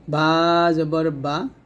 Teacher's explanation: বাটা হল দুই ঠোট মিল করে আমরা উচ্চারণ করব।